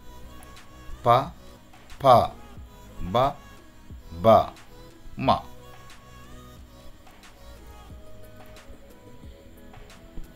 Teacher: Next ఓస్ట్ర, lips. అంటే two lips మనకి దగ్గరై ఈ శబ్దాలు వస్తాయి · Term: పవర్గ